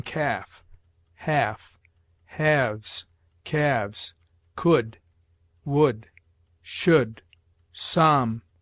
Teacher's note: L is sometimes mute, as in calf, half, halves, calves, could, would, should, psalm, talk, salmon, falcon.